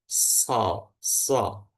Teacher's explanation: sod itu lidahnya bagian belakang itu agak menebal. So, so. Nah, kemudian rongga mulutnya itu menyempit karena lidahnya yang makin menebal.